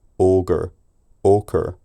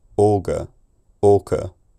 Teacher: the final vowel that replaces the r is the same vowel that French uses in words like je, me, de